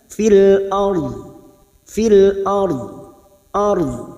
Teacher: ra ini kita baca tafkhim karena sebelumnya ada harokat fathah